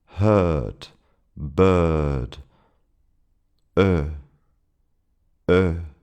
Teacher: the short uh which is not simply a shorter version of the sound, but the mouth is more relaxed and the lips are not so round. It's actually quite similar to the H sound in the English words heard or bird with a British pronunciation and a silent R.